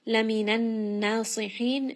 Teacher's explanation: noon is going to have ghunna. Just rest on this for a moment and then it is a 2-count med.